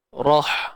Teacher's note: Huruf ha yang mati. Okey, ha yang mati pastikan kita sempitkan untuk dapatkan bunyi pedas tu